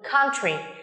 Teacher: Country của các bạn là một danh từ có hai âm tiết, chúng ta sẽ nhấn vào âm tiết đầu tiên như thế này.